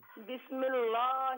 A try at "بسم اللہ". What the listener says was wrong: بسم اللہ میں لفظ اللہ کی لام کو باریک پڑھنا ہے. بسم اللہ نہیں، لام کو پر نہیں پڑھنا، اس کو باریک پڑھیں بالکل. بسم اللہ